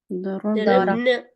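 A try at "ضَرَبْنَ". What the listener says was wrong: हाँ तो आपका बा लाम कलमा बोला नहीं, बोला ना, साकिन है, साकिन है ना, लाम कलमा साकिन हो गया। क्यों साकिन हुआ, जी, औरतें आई, लाम कलमे को खामोश करवा दिया, और ऐसा खामोश करवाया कि अब वो नहीं बोलेगा, ये याद रखिएगा, ठीक है।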